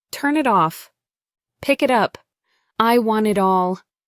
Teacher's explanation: the final sound of one word connects to the beginning of the next. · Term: linking